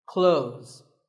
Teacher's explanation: Well, first of all, this word is not cloths. When we say clothes, the TH in the middle can often be silent.